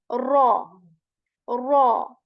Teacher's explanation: heavy means that it is a full mouth letter and back part of the tongue is raised